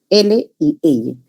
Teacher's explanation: obstrucción en medio y el aire sale por los lados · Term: laterales